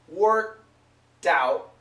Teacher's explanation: Worked out, and it's a stop K sound. Work, go to the K, worked out, and this D connects.